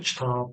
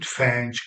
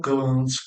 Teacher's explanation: bu 4 dənə samit sözün sonunda gəldikdə qarşılığına keçəcək. Özü nədir? Cingildir. Qarşılığı nə olacaq? Kar.